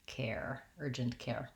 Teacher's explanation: In the word care, make sure you use diphthong air. Hold that long enough.